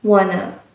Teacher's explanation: the words want to is often pronounced wanna